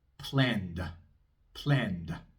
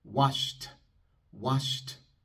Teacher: una A cortita después del sonido sonoro de la D? y un poco de aire después del sonido sordo de la T.